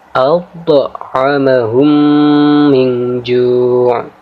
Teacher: Huruf to di sini kita baca dengan cara menekan dan sedikit memantul. Karena ini adalah bacaan qalqalah dan qalqalah sughra.